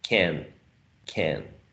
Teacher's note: But if you use a phonetic transcription, you have to show aspiration in the plosive voiceless k in initial position, and you have to use, right, this diacritic mark saying, hey, this vowel sound is nasalized because it's coming right before a nasal sound